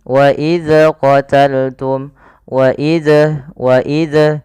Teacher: dia memantulkan huruf dzal padahal zal bukan termasuk huruf yang mantul